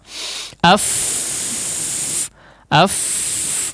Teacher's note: tidak bergetar si dua pita suara tersebut ketika pengucapan huruf fa.